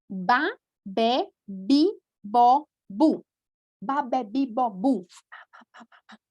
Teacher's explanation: veja aqui minha boca, gente, ela é bilabial. Nós abrimos e fechamos a boca quando pronunciamos